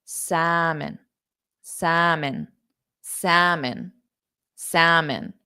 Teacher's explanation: the m o n the vowel sound o is an unstressed sound so if I were to spell it S Salon am salmon